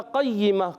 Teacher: قاف کو موٹا رکھنا ہے، زبان کی جڑ اور تعلق کے نرم حصے سے قاف ادا ہوتا ہے.